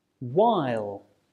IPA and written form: waɪl (while)